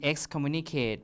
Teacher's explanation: Therefore, you have an S, which is what you expect, right? S is voiceless, K is also voiceless, so they match in terms of voicing. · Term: assimilation in terms of voicing